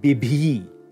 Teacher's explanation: the reduplication is again going to lose aspiration and shorten the vowel